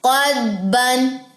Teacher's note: हरगिज नहीं आपने दाद जज़म के ऊपर कलकला करना, ये गलत तरीका है।